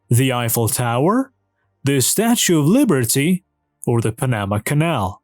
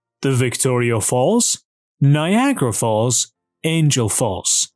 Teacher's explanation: the first one is a falling intonation and the last one is also a falling intonation. The ones in between are rising.